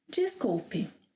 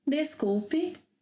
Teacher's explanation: When I speak a little faster, I make it 'djees'; more slowly, 'des'. For example, I could say ‘desculpe’, ‘jeesculpe’.